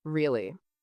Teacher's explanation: Say really with rising tone, now it's excited. Or, or say it with falling tone, really. Now you sound annoyed.